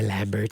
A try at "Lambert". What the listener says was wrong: It's Christopher Lambert. The T is silent. The T is silent.